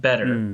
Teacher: there's no T when I say that better it's more of a D sound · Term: softer version